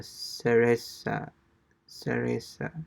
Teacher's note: the Z sounds more like an S, right?